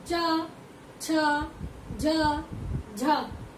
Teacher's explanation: ऐसा लगता है कि ध्वनि तलवे से चिपक कर निकल रही है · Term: तालव्य